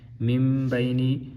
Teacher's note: نون ساکن کے بعد با آ رہا ہے، یعنی یہاں پہ نون ساکن کا اقلاب ہو رہا ہے، تو با آئے گا تو نون کو میم کے ساتھ بدل کر پڑھیں گے